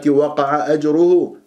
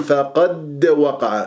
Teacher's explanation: القاف مفخمه مرتبه ثانيه مفتوحه الداله مقلقله قلقله الصغرى في وسط الكلام لان مربوطه في كلمه